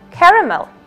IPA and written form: ˈkær.ə.məl (Caramel)